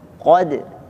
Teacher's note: jadi di sini qafnya tebal, dalnya tipis. Qad, jangan sampai qad tipis atau qodo tebal semuanya.